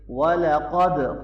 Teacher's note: قاف کو موٹا پڑھیں گے، دال پہ قلقلہ ہوگا